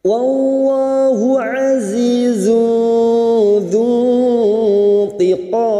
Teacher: Dhamma tanwin bertemu zal ikhfa hakiki, kita samarkan bunyi dhamma tanwin dan mendengung selama 3 harakat.